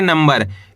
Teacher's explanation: इसके अंदर अपन आधा म का उच्चारण निकालेंगे।